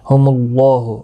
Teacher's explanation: اللہ کا لام موٹا پڑھا جائے گا اس پیش کی وجہ سے، یعنی پر پڑھا جائے گا۔